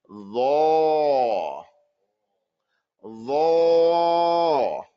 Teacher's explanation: Don't change your lips. You have to raise the inside, the back of your tongue, the back of your tongue.